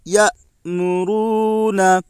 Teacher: واو ساکن سے پہلے پیش ہے، اس لیے واو مدہ ہوگا۔ واو مدہ کو ایک الف کے برابر کھینچ کر پڑھیں۔ معروف پڑھیں، مجہول آواز سے بچیں۔